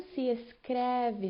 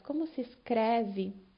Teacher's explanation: como se escreve, notem o E aberto